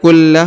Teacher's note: Kulla huruf la ditahan dan ditekan ya.